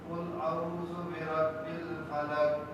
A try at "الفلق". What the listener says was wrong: فلق قاف کو کھولیے قاف بھی کہیں فلق آپ تو پہلے بات قاف ہی نہیں کہہ رہے کھولنا تو چھوڑیے آپ کاف کہہ رہے کاف فلق نہیں فلق فلق کھولیے فلق نہیں فلق وہاں رکیے نہیں کھول دیجیے فلق فلق فلق فلق نہیں فلق فلق